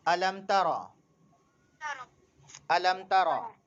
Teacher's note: غنہ نہیں کرنا ہے ہم کو، اخفا نہیں کرنا ہے. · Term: اظہار شفوی